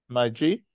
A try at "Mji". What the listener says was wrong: Don't bring a. The letter M is failing to come.